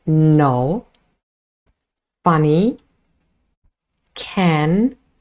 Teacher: the air escapes through the nose and our vocal cords vibrate because all of our 3 nasals are voiced consonants.